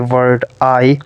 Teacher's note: i consist of a vowel and second one is e vowel the first ah is a long and strong whereas second part e which is short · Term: diphthongs